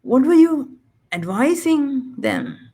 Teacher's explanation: verb stress on the second syllable